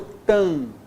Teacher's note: Olha só, mesmo nível, tam. Ó, só nasalizei a vogal anterior